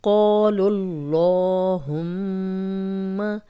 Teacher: اب قاف موٹا پڑھیں گے اور لمبا بھی کریں گے کیونکہ الف مدہ ہے